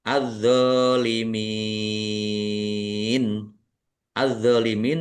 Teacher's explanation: Karena tidak dibaca langsung masuk ke huruf berikutnya yaitu dandai dnya ada tasdidnya. Dnya dibaca dobel ditekan dan ditahan biar tampak dobelnya. D fathah berdiri mad thobi'i panjang dua harakat. · Tetapi karena di akhir kata atau karena bertemu dengan huruf terakhir yang dibaca sukun karena waqaf maka menjadi mad arid lisukun. dibaca panjang boleh 6 4 atau dua harakat.